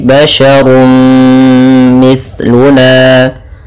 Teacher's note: masukkan suara runnya kepada mim, maka kemudian menjadi basyarun mithluna. Kemudian lafal na ada mad tabi'i yaitu fathah bertemu alif. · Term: idgham bi gunnah